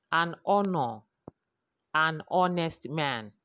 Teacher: So we cannot say a ha, no, because the H there is silent. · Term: silent H